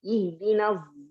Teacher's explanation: Bercampur antara sad dengan zai.